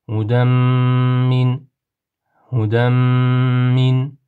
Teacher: Bu yerdagi tanvinni, ya'ni tanvinli nunni mimni ichiga, ya'ni g'unnali idg'om harflarini ichiga kirgizib, nima g'unna bilan o'qiymiz.